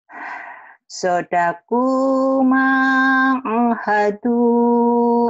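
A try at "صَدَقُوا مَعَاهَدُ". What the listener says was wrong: Hanya panjang, Bu. A, ma, panjang sama. Ayo lagi.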